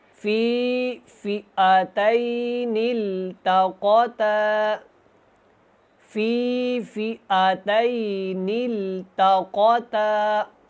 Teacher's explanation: آیۃ، قد کان لکم آیۃ فی فئتین التقطا، اب اس لفظ کو جو ہے نا دھیان سے پڑھیں، فئتین اس طرح نہیں پڑھنا کیونکہ یہ حمزہ ہے اور حمزہ کے اوپر صرف زبر ہے اور اس کی جو مقدار ہے ہاف الف کے برابر ہے